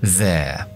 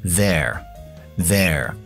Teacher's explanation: Lleva una R al final, que yo como británico no lo pronuncio. Si fuera estadounidense, diría there.